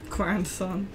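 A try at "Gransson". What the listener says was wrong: Grandson. It's just, without a D.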